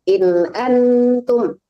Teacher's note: In-nya nggak boleh tertahan. In antum. An-nya baru dengung.